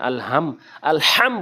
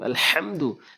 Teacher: হলকের মাঝখান থেকে হা উচ্চারণ করতে হবে